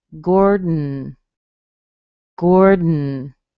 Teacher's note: all I do is I switch from the sound in my mouth to the sound in my nose